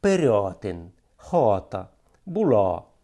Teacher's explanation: Ще одна особливість нашої говірки – також, напевне, субстратного походження, глибоке вимовляння наголошеного «а», яке прямує до «о»